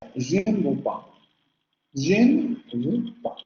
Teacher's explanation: En frases en donde tengamos la frase nominal, o bueno, más bien la secuencia, je ne. Siempre que tengamos je ne, se va a pronunciar la vocal media central labializada.